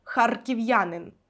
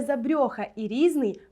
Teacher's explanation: харків'янин твердий р харків'янин р але забрьоха і різний мають пом'якшений р